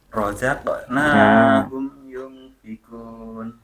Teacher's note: itu qafnya Coba dipantulkan lebih keras sedikit ya